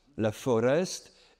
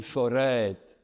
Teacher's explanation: La foreste la foreste est devenue une forête avec un un allongement compensatoire de la voyelle